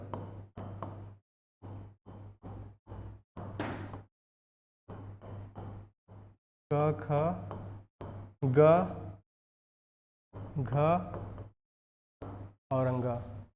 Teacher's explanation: ये जो क वर्ग है ये गले से बोला जाता है